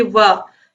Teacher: आप बोल करके देखिए वाह। जब आप वह बोलोगे तो आप देखोगे कि वह बोलने पर जो आपके निचले होंठ है वो ऊपरी दांतों को स्पर्श कर रहे हैं